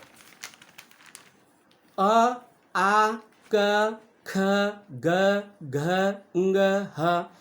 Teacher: इनका उच्चारण कंठ से आता है और स्पर्श होता है